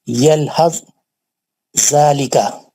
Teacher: हुर्फ सा साकिन का जाल मुशद्दद में इदगाम मुतजानिसैन हो गया।